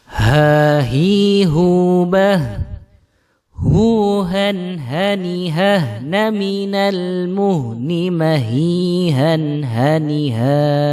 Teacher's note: Huruf hamzah dan huruf ha ini membacanya harus keluar dari tenggorokan bagian bawah. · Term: suara ha